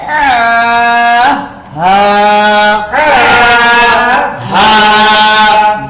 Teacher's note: হা হলকের শুরু হইতে সহজ আওয়াজে